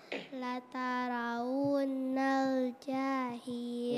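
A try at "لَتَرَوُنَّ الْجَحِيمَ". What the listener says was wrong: Jangan tarik, tarik. Jangan tarik, langsung masuk ke nun tasdidnya.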